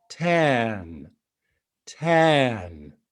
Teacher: long vowels that are also lower vowels in your resonating space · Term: lower elongated vowels